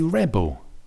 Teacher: So the stress here is bigger on the re, the first syllable, for the noun